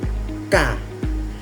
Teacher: diucapkan dengan bagian belakang lidah menyentuh langit-langit